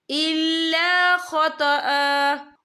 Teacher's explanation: یا دیکھیں آپ کو چھوٹی سی جیم لکھی نظر آ رہی ہے تو پھر جائز کی علامت ہے، تو یہاں پہ ٹھہرنا بہتر ہے۔ تو وقف کی صورت میں ایک زبر پڑھا جائے گا، دو زبر نہیں پڑھے جائیں گے۔